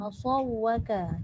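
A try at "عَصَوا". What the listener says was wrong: Tapi jangan tekan asaw. Dia tak ada antara ain dengan sad, tak ada sabdu.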